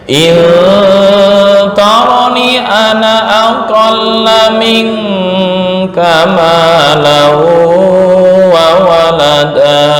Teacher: Sepakat untuk ana semua dalam Al-Quran dibaca pendek